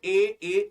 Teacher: अब ए बोलो है, जब हम बोलते ए बोलने पर जीभ हमारी आगे की ओर बढ़ रही है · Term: अग्र स्वर